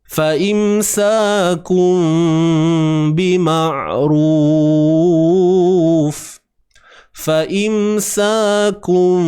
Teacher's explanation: Bibir atas, bibir bawah ni kita lemahkan pegangan dia. Dia tutup tu ala kadar lah. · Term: ikhfa